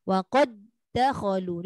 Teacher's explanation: dia tidak ada bunyi langsung antara dal pertama kepada dal kedua tu. Tapi dia sambung. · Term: menahan suara